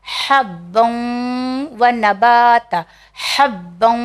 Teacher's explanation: یہاں پہ بھی ادغام کا قانون آ گیا، اس لیے ہم نے اسے تھوڑا سا گننا کیا